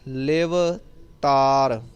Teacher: ਕਈ ਗੁਰਮੁਖ ਜਨ ਆਨਲਾਈਨ ਸੰਥਿਆ ਪਿਛਲੇ ਲੰਬੇ ਸਮੇਂ ਤੋਂ ਪ੍ਰਾਪਤ ਕਰ ਰਹੇ ਨੇ, ਤਾਂ ਉਹ ਇਲਾਕੇ ਦੇ ਹਿਸਾਬ ਨਾਲ ਕਈ ਵਾਰ ਐਸੇ ਸ਼ਬਦ ਉਹ ਭਾਰੇ ਬੋਲ ਜਾਂਦੇ ਨੇ, ਉਹ ਧਾਰ ਕਹਿ ਜਾਂਦੇ ਨੇ। ਤੱਤੇ ਦੀ ਜਗ੍ਹਾ 'ਤੇ ਧੱਦਾ ਕਈਆਂ ਦਾ ਉਚਾਰਨ ਹੋ ਜਾਂਦਾ ਹੈ। ਸੋ ਇਹਨੂੰ ਪੋਲਾ ਪੜ੍ਹਨਾ ਹੈ